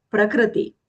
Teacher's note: The kr there is not a joint consonant. It's a combination of the consonant k with r, a vowel.